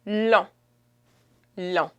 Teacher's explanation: Long in French is long. You don't pronounce the G at the end